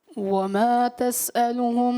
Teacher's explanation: तसअलुहुम में मीम जो साकिन है उसमें कलकला किया इन्होंने, तो गैर कलकला में कलकला करना ये बड़ी गलती है।